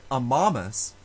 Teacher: In the word Amamos, we love, the second to last syllable has a long letter A, and so it is stressed